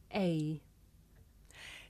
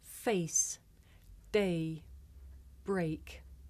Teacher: the shape the mouth makes changes from the beginning of the sound to the end it's pronounced a did you notice how my mouth changed shape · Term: double vowel sound